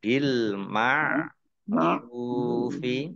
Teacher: Ain ya dibaca di tenggorokan ya bil ma'rufi ra dhammah wawu sukun mat tabi'i panjang 2 harokat.